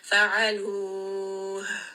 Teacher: you are going to hear almost like a sigh because it's coming down from the throat. We're not bringing this up from higher up, so it shouldn't be like a warm kind of exhale. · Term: hums